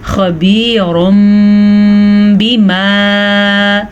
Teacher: اس میں ہونٹ بند ہونے کے ساتھ ساتھ غنہ بھی کیا جاتا ہے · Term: اقلاب